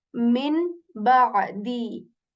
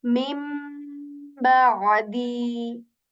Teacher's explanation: So this is the second possibility how we say noon sakin, and the third possibility can be that we change the sound of noon to meme